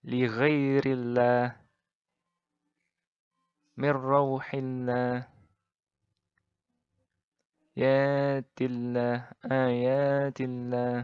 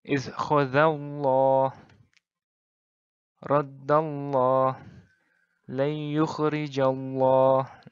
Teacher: Jadi, kalau I, maka ringan. Kalau A atau U, jadi berat. Tebal maksudnya.